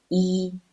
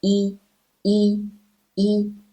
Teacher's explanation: it pronounce like ea in sea or ee in see but just relax your lips